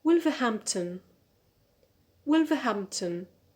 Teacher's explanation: cheese ah number four wolverhampton wolverhampton so here because the stress the primary stress is on ham so we need another stress which is a secondary stress on the first syllable